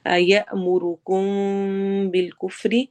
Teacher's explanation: جی اخفا شفی ہو رہا ہے، میم ساکن کے بعد با آ رہا ہے تو ہم میم کی آواز کو چھپا کے پڑھیں گے